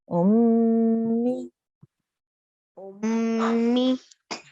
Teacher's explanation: we have a two second sustained nasal sound here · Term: mim gunna